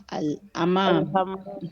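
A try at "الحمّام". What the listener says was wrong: Avec le ha, al-hammam et la shadda. التشديد الميم. al-hammam, al-hammam.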